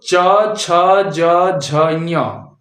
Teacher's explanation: च वर्ग बोला जाता है तालू से तालू मैंने पहले भी बताया हुआ है कि दांत की जड़